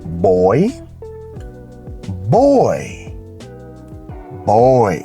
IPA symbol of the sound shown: ɔɪ